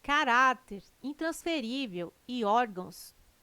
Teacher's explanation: Caráter, intransferível e órgãos têm sua sílaba tônica na penúltima sílaba. São paroxítonas.